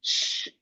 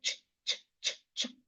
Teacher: S and H says sh. You release air. But C and H just say ch, ch, ch, ch. You don't release much air like that. You go ch, ch.